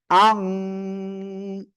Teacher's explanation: নাকের ভিতরে নিয়ে গুন্না করবেন